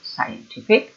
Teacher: when it comes into an adjective, the stress syllable is the second syllable